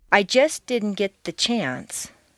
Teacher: because the ending of just and the beginning of didn't are so near each other in the mouth it's not worth the effort to start the sound all over again so they just flow into each other you don't say I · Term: consonant consonant liaisons